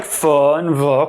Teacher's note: Labiodental sounds use both the lips and teeth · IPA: [f] and [v]